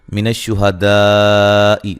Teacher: دا پہ جو مد ہے یہ مد واجب ہے، الف مدہ کے بعد حمزہ اسی کلمہ میں ہے